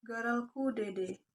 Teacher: Penggunaan bunyi R pada kata gerelku yang cenderung getar